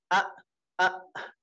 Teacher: tepatnya di apa ee tenggorokan yang paling bawah a a ini kita merasa tenggorokan yang paling bawah dan benar-benar paling bawah yang paling pangkal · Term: Hamzah